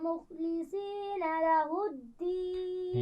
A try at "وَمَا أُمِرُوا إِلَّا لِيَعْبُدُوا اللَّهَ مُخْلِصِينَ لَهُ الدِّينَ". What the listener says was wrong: یعبد اللہ، ہا کو واضح کیجئے، مخلصین میں صاد کو موٹا پڑھنا ہے.